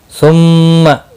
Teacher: ثم میم مشدد پر غنہ ہوگا۔